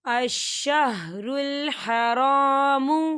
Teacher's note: یہاں خالی الف سے پہلے زبر ہے، یہاں پر الف مدہ ہو رہا ہے، تو ہم اسے دو حرکت کے برابر کھینچ کے پڑھیں گے۔